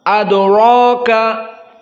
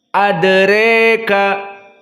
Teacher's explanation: condong sedikit dari fathah mendekati kepada kasrah namun masih jauh sekali condongnya masih mendekati fathah maka dibaca adreka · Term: ataqlil